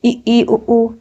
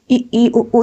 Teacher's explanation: ई उ ऊ, इसमें मुंह बहुत कम खुलता है। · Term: समृत